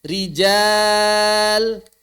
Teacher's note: ra-nya kasrah. Maka dia baca tipis.